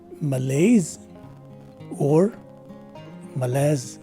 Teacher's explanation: the s takes a z sound and the letter e at the end of the word is dropped